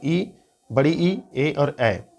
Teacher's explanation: जिन स्वरों के उच्चारण में जीभ का अग्र भाग काम करता है उसे अग्र स्वर कहते हैं